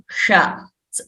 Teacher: murdhanya sha, we are referring to this sha, slightly rolling the tongue